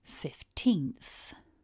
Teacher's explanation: see two important things firstly it's a two-syllable word and secondly both syllables get a stress but the biggest stress is on syllable two